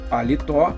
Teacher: a última é oxítona, é a mais forte